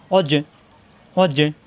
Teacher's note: করে সাকিন থাকলে কলকলা আর কলকলা হরফ ধাক্কা দিয়ে পড়তে হবে জিমে সাকিন কলকলা ধাক্কা হবে